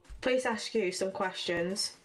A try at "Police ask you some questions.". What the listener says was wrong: Police ask you. Police ask. Sorry, it sounded like please. Police ask you some questions.